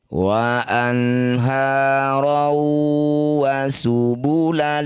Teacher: Masukkan bunyi fathah tanwin pada wawuh, bibir mencucu dengung dua harokat. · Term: idgham bi gunnah